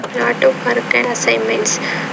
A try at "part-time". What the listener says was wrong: Now, when you say, I think you said part-time, you're not pronouncing that P. Yeah, I'm not exactly sure what you're saying.